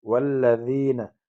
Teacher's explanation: یا مدہ یا ساکن آگے زیر ہے، ایک الف کی مقدار اس میں آواز کھینچیں